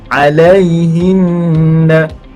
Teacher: Kita baca dengan dengung kadar sebanyak 2 harakat. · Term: nun syaddah